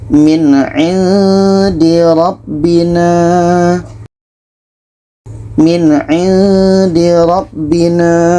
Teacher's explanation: Ini izhar halki. Maka di sini harus dibaca jelas. Nun jelas, ain jelas.